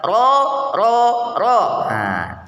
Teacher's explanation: ketika diucapkan posisi lidah bergeser dari makhrajnya inhiraf